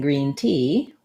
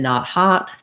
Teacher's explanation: e is near the front and ah is more open and near the back